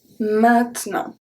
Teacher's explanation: We don't pronounce the E and we don't pronounce the T at the end.